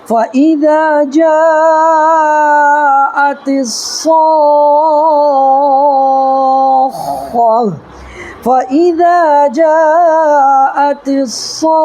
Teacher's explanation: ٹھیک ہے، تا ہے تو یہاں پر ہم کو ہا پڑھنا ہے، ہائے ساکینہ. تا جو ہے وہ ہائے ساکینہ بن جاتی ہے